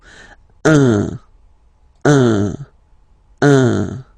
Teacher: So if you listen to me, you don't hear any N, okay? So it's just a combination of the two. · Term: the nasal